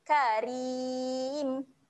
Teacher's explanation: mim dekat hujung ni kita akan matikan bunyi huruf mim